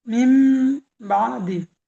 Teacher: নুন সাকিনের পরে বা আছে তাই নুন সাকিনকে মিমের দ্বারা পরিবর্তন করে এক আলিফ পরিমাণ গুন্না করে পড়তে হবে